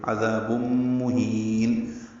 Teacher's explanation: ہے، عذاب میں ذال نرمی سے ادا ہوگا، ذال مدہ ہے، تنوین کے بعد میم آنے کی وجہ سے ادغام ہوگا، غنہ کریں گے ، عذاب مہین، ہا کو لمبا کریں گے، نون کو ساکن